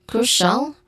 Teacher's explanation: It has a stressed syllable in the first one, cru, which has a long u sound